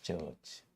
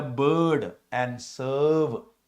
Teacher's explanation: The vowel sound in the middle is a long central vowel found in the bird and serve.